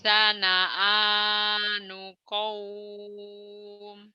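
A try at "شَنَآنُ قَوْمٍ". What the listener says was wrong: Shin, shinnya nggak keluar. Syana'a, syana'a, syana'a, syana'anu qaum. Syana'a, syana'anu qaum. Syana'a, syana'anu qaum.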